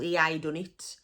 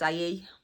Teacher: so we drop our hes so he turns into e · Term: dropping our H